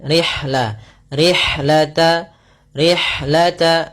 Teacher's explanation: alirkan nafas pada lafal ha karena ha memiliki salah satu sifat yaitu sifat hams. Kita coba alirkan rihla rihlata rihlata.